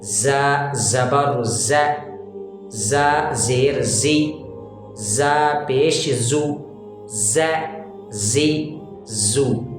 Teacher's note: زا کو موٹا نہیں پڑھا جاتا, منہ بھر کے باریک پڑھا جاتا ہے